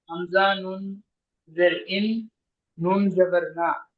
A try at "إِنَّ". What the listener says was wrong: নয়, হামজা নুনের ইন গুন্না করে পড়তে হবে।